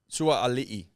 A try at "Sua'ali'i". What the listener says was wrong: Sua'ali'i. Do you pronounce the two A's? So you go Sua'a, Sua'ali'i. Sua'ali'i.